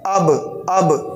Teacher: तो ये होंठ मिल रहे हमारे दोनों, जो अंदर का इतर हिस्सा है होंठों का ये मिल रहा है अब। तो अब ये देखो मिल रहा है, तो इसका मतलब ये कि बा यहाँ से निकलता है, नहीं होंठ, दोनों होंठों के जो इतर हिस्से हैं अंदर वाले, यहाँ से बा अदा होता है।